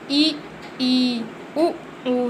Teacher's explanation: इनके उच्चारण में मुख्य द्वार बहुत सकरा हो जाता है लेकिन स्पर्श नहीं होता। अब जैसे इसे बोलिए ई उ ऊ, तो हम क्या देख रहे हैं कि हमारी जो जिह्वा है वो फोल्ड हो जाती है और वो स्पर्श नहीं हो रही है। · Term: सवृत्त